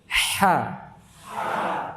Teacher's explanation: kalau ha tenggorokan tengah itu yang keluar udara dulu baru suara-suara udara dulu dikeluarkan baru suara-suara coba ha ya enggak hi7 Alhamdulillahi